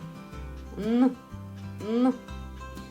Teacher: Повітря зустрічає перешкоду. Звук Н твердий приголосний.